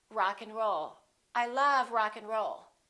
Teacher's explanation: and let's look at what happens to and in this case we reduce the a and the D those disappear often